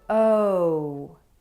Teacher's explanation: Rose Boat OH moves from Rose up to Blue